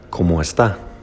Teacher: The pitch raises on the TA of está and stays high.